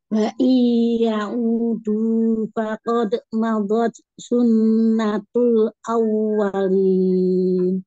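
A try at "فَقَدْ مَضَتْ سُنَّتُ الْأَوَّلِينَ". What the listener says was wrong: Iya, Umi, ketemu huruf sukun itu tidak berhenti, tidak jeda. Fakod, madot, sun. Ah, itu berhenti semua, gak boleh. Fakod, madot, sunnatul awalin.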